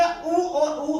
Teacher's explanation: फिर पश्च में देखिए उ और उ, हमारी जो जीभ की पीछे वाली स्थिति है वहां से उ और उ, इन दोनों का उच्चारण है